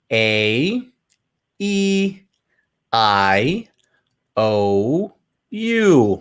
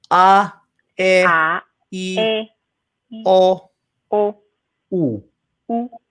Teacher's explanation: So in Spanish, for the most part, they're staying open. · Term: Las vocales